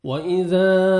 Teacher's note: الف مدہ ذال کو آپ نے 1 سیکنڈ کھینچنا ہے